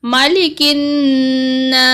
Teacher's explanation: میم کو لمبا نہیں کرنا، ایک زبر جتنا لمبا کریں گے